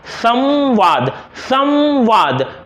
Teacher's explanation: व व्यंजन से पहले अनुस्वार का उच्चारण म जैसा होता है, अर्थात इसके ध्वनि म जैसे आएंगे।